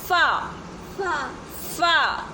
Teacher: जब ऊपर वाले सामने के दो दांत नीचे वाले होंठ के अंदर वाले हिस्से से लगते हैं तो अदा होता है फा